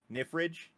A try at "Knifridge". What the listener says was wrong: Knifridge? Yep, the K is not silent.